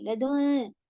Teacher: لدن میں آپ کو کھینچنا ہے، غنہ کرنا ہے، اور نون کی آواز کلیئر نہیں ہونی چاہیے